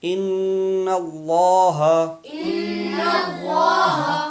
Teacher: جہاں پہ اللہ سے پہلے زبر ہو تو اس اللہ کو پر کر کے پڑھیں گے، پر یعنی موٹا کر کے، تو یہاں پہ گننا بھی ہوگا اور اللہ کا لام پر ہوگا.